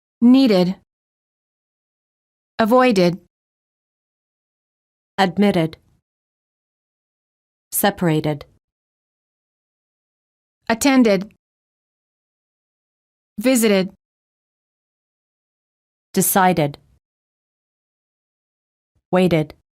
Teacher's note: of the word is spelled with the d or a t the e d is pronounced as a separate syllable